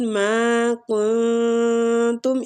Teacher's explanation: اخفاء حقیقی ہو رہا ہے، نون کو چھپائیں گے